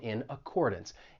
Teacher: this phrase of course we can link those first two words we can link that consonant n in in with the vowel sound in accordance